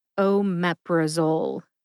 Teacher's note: Emphasize MEP. See if you can hear that emphasis when I say it slowly.